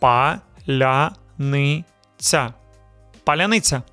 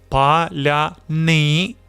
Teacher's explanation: Stress is on the second to last syllable.